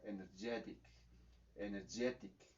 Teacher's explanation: Eso es justamente lo que está pasando en esta ocasión, que el estrés está primeramente en la primera sílaba y cuando pusimos el sufijo para convertirlo en energetic, entonces el estrés se mueve hacia la derecha, directamente hacia donde está el sufijo